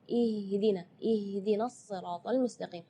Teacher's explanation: Ya, itu tidak boleh, itu keluarnya dari dada. Sedangkan makhraj huruf H itu adalah dari tenggorokan. Jadi keluarnya tipis karena H itu termasuk huruf di antara 28 huruf hijaiyah yang paling lemah adalah huruf H.